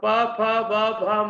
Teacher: आप प बोलने का प्रयास कीजिए, होठ को बिना मिलाए आप नहीं बोल पाएंगे।